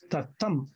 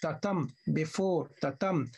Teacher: The first is unstressed, the first syllable is unstressed, the second syllable is stressed. So tatam. The second syllable should receive the stress, the accent. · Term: iamb